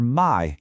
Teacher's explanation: Now we absolutely need to pay special attention to the falling tone. For my, you start high and drop your voice hard, kind of like an exhausted sigh.